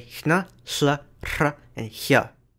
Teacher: Icelandic also has voiceless versions of nasals and liquids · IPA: /n̥/ /ɬ/ /r̥/ and /ç/